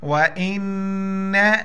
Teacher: نون پر شد ہے یہاں پر غنہ کریں گے ساؤنڈ نوز